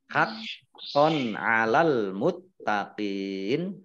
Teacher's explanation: Fathah tanwin bertemu dengan huruf ain, bacaan izhar dibaca jelas. Haqqon 'alal muttaqin, alif lamnya alif lam qamariyah, ditandai lamnya dibaca sukun, taknya dibaca double, ada tasdidnya.